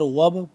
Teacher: وب، واو با زبر وب، با ہو گیا یہاں پہ قلقلہ کریں گے با پہ کیونکہ با ساکن ہے تو اس کو بھی ہم قلقلہ کریں گے